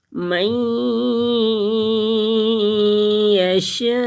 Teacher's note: من یشاء، نون ساکن کے بعد یا حروف یرملون میں سے آ گیا تو یہاں پہ ادغام کریں گے غنے کے ساتھ، اور حروف مدہ کے بعد حمزہ آ گیا تو مد متصل ہے، جڑی ہوئی مد، اس کو 5 الف کے برابر کھینچ کر پڑھیں گے اور حمزہ کو ساکن کر دیں گے کیونکہ وقف مدرک ہے تو یہاں پہ وقف کریں گے، سانس لیں گے، رکیں گے.